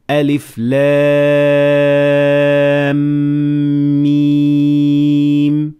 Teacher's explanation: the mim starts with the letter mim. So this means that they will have to be fused together into one mim. So you will say alif lam mim.